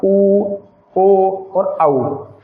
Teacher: देखिए, ओष्ठ की आकृति के द्वारा वृत्ताकार बोला, तो जब हम उ बोलेंगे तो ओठ के द्वारा वृत्त बनेगा